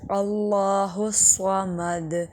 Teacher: لفظ اللہ کو موٹا کریں گے